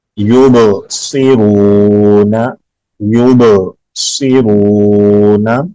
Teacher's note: با پہ قلقلہ کریں گے، صاد کو موٹا پڑھیں گے, را کو لمبا کریں گے, حروف مدہ آنے کی وجہ سے اس کو لمبا کریں گے.